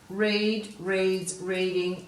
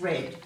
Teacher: We could have the base word as read, reads, reading, and the past tense is read. So we're going from a long vowel sound here to a short vowel sound in the past tense